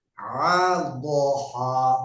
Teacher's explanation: Ha, hanya kurang apa ini menyempit, pita suaranya kurang menyempit di ha, karena di sini ada di tengah-tengah tenggorokan. Ha dan ha ini tengah-tengah tenggorokan sehingga pita suaranya menyempit